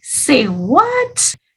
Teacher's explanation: the intonation changes it goes up because we're surprised okay so when you say it you gotta have that intonation